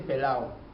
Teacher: los sufijos ADO edo e ido Fueron cambiados por los sufijos ao e o e io